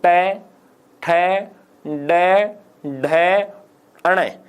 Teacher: एक बार बोल के देखो, ट ठ ड ढ अण। जिह्वा ऊपर जाके कोमल सी जगह को टच कर रही है ना, वो घुमाव सा, उसको मूर्धा कहते हैं